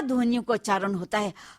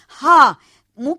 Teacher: इसमें मुख विवर पूरी तरह खुला रहता है और निश्वास बंद कंठ द्वार को वेग से खोलकर बाहर निकलती है, और इसमें हा शा ध्वनियों का उच्चारण होता है। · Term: काकल्य ध्वनि